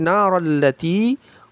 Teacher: Na panjangnya dua harakat mad asli